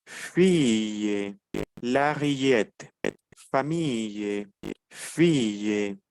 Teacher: ya no la pronunciaría más como una doble l sino como una Y